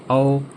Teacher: औ में भी आपका होठ हिल रहा है और आपके गले से आवाज़ निकल रही है